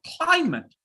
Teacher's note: put more pressure on the first syllable